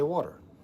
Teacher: That's the flapping T. That is the alveolar flapping of a flapped T.